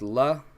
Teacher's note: a typical L sound just love there's nothing special about it there's no rolling it there's no making it sound like an R it's just a typical L like in English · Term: lamb